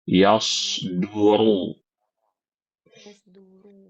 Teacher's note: Jadi di sini yang tebal itu huruf shad dan huruf ru. Huruf dunnya tipis.